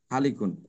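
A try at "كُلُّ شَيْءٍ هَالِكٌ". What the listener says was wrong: হাটাকে আরেকটু লম্বা করলে ভালো হয়।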